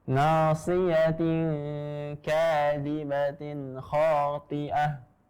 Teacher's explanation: toknya ini tebal ya, jangan sampai menjadi tipis, terbawa dengan kasrohnya, kasroh dari to